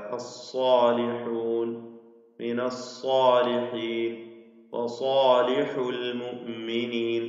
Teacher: സ്വാദ് തഫ്ഹീമോടുകൂടി പെരുപ്പിച്ച് തടിപ്പിച്ച് ഉച്ചരിക്കേണ്ട അക്ഷരമാണ് സ്വാദ്